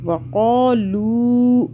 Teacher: وقالو، لو کو کھینچ رہے ہیں، دیکھیں واو آ رہا ہے نا لام کے بعد، ساکن والا واو ساکن ہے تو لام کو کھینچیں گے. وقالو، قاف کو موٹا پڑا.